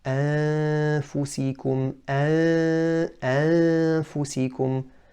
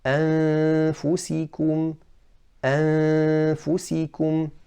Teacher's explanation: most of the sound should be coming from the nasal cavity and only a little sound from the mouth. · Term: ikhfa